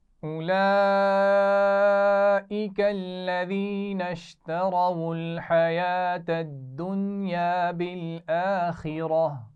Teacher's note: بالآخرہ، را کو موٹا پڑھا جائے گا اور آخر میں گول تا پر ہم نے وقف کیا تو اس کو ہا ساکن سے بدلا ہے